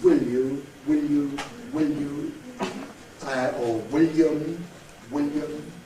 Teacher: dark L is not possible in RP and therefore that must be produced as clear